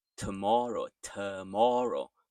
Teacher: So you can actually say it as an slight e, a soft e, although the correct spelling is with an o